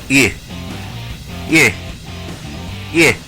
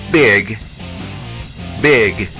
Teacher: es un sonido entre la letra e y la letra i juntas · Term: sonido corto de la letra i